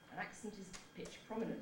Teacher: And it was demonstrating the pitch prominence. You've got a high pitch on ac, a low pitch on pitch, and then a high one again on prom. So all those three syllables were accented.